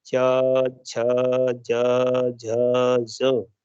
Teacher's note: यानी जब आपकी जिह्वा तालू से चिपक जाती है। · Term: तालव्य